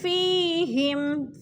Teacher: یا مدہ کو 1 الف 2 حرکات کے برابر لمبا کر کے پڑھنا ہے